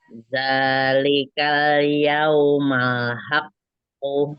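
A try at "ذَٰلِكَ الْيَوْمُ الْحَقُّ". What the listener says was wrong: Yaumul. Bukan yaumal. Yaumul. Zalikal yaumul haqqo. Haqqo. Haqqo. Balik lagi ke ko. Kalau tasjid itu harus balik lagi ke huruf semula.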